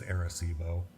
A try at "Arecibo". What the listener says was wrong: Terrible. Arecibo sounds like it starts with an E. Arecibo.